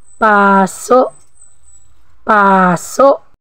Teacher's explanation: binigkas natin ito ng dahan-dahan pero may impit o glottal stop sa dulo